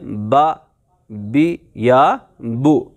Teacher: با کا جو مخرج ہے وہ ہے دونوں ہونٹوں کا تری والا حصہ، یعنی جب آپ پڑھتے ہیں با زبر با تو ہونٹوں کا یہ جو اندر والا حصہ ہوتا ہے، یہ گیلا والا حصہ، یہ آپس میں ملتا ہے، تو ہم پڑھتے ہیں با، بی یا بو۔